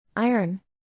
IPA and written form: ˈaɪ.ərn (Iron)